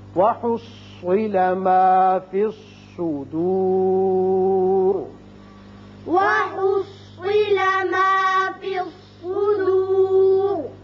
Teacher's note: وصل کی صورت میں را باریک ہے، لیکن جب وقف کریں گے تو را پر ہو جائے گا، اس لیے کہ پیچھے پیش ہے.